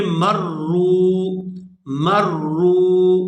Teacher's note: یہاں جو را ہے یہ مشدد ہے، اس کے اوپر شد ہے، یہ 2 دفعہ پڑھی جائے گی. ایک دفعہ اس میم کے اوپر جو زبر ہے اس کے ساتھ پڑھی جائے گی اور دوسری دفعہ یہ را جو ہے اس کے اوپر پیش ہے یہ واو ساکن کے ساتھ ملے گی.